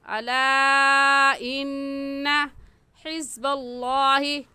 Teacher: लफ्ज़ अल्लाह से पहले ज़बर आ गया तो लफ्ज़ अल्लाह को मोटा करके पढ़ेंगे